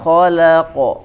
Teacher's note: Kho ya di tenggorokan paling atas.